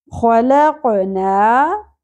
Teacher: قاف ساکن پہ قلقلہ بھی کریں گے